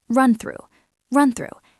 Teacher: We do not want to sound like a robot. The key link here is between run and through.